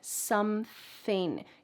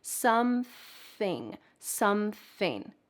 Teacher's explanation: You need that th with your tongue out of your mouth.